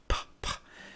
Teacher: For example, when you pronounce the letter P in a word, p, p, p, it's non-voiced. It's all air right there. There's no tone. There's no pitch.